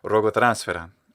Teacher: the actor has this beautiful uh retracted s sound which i think is native to his german